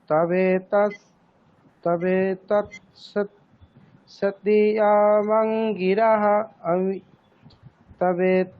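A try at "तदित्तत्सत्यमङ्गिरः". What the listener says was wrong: তদে তৎসত্য মং, মংটা বলে তারপরে আবার স্বর দিতে হবে আরেকটা। হ্যাঁ, তবে তৎ সত্যমঙ্গিরহ।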